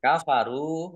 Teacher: ra dhammah wawu sukun mat tobi'i panjang 2 harokat